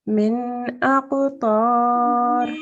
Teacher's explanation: a bouncing letter, so you have to make a slight jerk sound